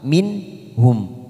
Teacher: Kita tadi memulai dari sini walakin ikhtalafu masuk pada faminhum nun sukun bertemu ha. Kita baca jelas tanpa mendengung karena nun sukun bertemu ha adalah bacaan idhar halki minhum.